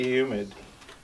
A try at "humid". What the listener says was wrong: Sounded like you said humid, like a U.